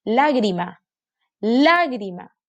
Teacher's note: Aquí está su sílaba tónica, en la antepenúltima. Y es una palabra esdrújula.